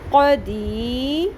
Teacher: قاف کو حلق کے وسط سے ادا کرنا ہے، زبان کی جڑ کو اوپر نرم تالوں سے ٹکراتے ہوئے اور پر بھی کرنا ہے